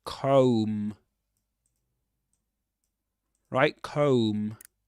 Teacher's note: You don't pronounce the final B again. You don't pronounce it.